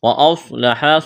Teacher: صاد کو موٹا کرنا ہے، سٹی کے آواز پیدا کرنی ہے، الف مدہ ہے، ایک الف کے برابر کھینچنا ہے۔